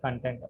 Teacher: కంటెంట్, the second syllable is యాక్సెంటెడ్